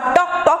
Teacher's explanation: जीभ टाळूला चिकटवून आपण असा टॉक टॉक आवाज आपण करत असतो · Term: जिभेचा आवाज